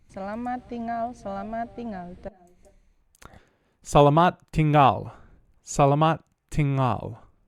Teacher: Sounds like they put those N and G a little bit together.